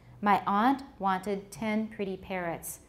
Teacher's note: both wanted and pretty can be stressed in she wanted a pretty parrot but may not be stressed in my aunt wanted 10 pretty parrots